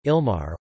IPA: ˈilmarɛ